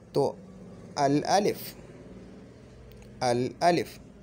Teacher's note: ये हर्फ जो है ये लाम को अपने अंदर नहीं खींचेगा, ये लाम को अपने अंदर नहीं खींचेगा।